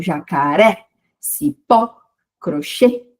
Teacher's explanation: Então, a última sílaba é a mais forte, a última. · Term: oxítonas